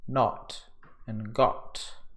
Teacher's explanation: The next sound is a British sound. It's not ah, it's not o, it's in between those sounds. It's more like o, like in the words not and got.